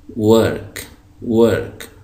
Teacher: तो अंग्रेज़ी में जब हम डब्ल्यू पढ़ेंगे तो हमारे दोनों होंठ गोल होंगे। तो इसको हम पढ़ेंगे वर्क, वर्क, दोनों होंठ गोल।